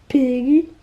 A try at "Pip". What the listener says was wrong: Remember, it's with a P at the end. Not a G, a P. Pip.